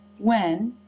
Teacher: the tongue is not down and the jaw does not drop as much. This is because the word when is not stressed in this sentence